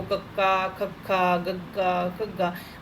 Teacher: ਮਤਲਬ ਜੀਭ ਆ ਜਿਹੜੀ ਕੋਮਲ ਪਾਰਟ ਨੂੰ ਟੱਚ ਕਰਦੀ ਹੈ, ਤਾਂ ਕਰਕੇ ਕੋਮਲ ਤਾਲਵੀ ਕਹਿੰਦੇ ਇਹਨਾਂ ਨੂੰ।